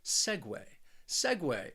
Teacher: it's a very subtle sound subtle subtle then we have segway this word also has two syllables and the stress is on that first syllable